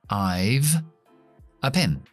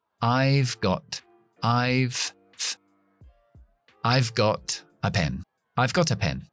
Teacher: Y si estás familiarizado con el resto de mis vídeos, sabrás que la F es la hermana de la V, pero sin voz. Así que en conversación, esta V se queda un poco desonorizada muchas veces y suena un poco como una F. Entonces, I have a pen.